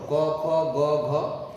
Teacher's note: কণ্ঠ থেকে উচ্চারিত হয়, এটাকে আমরা বলি জিহ্বামূলীয় বর্ণ